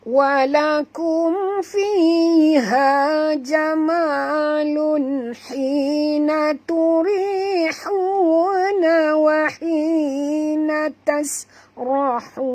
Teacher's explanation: Bila banyak ha memang kita ada masalah, kerana ha ni keluarnya daripada halqum, tempat kita nak keluar nafas